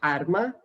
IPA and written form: aɾ ma (arma)